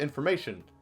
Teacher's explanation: I pronounce that t sound in information as a sh, and this is called palletization. We pushed the sound forward in our mouth and it became a sh sound.